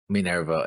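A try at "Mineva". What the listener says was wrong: Minerva. No R.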